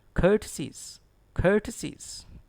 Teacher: And R is not pronounced.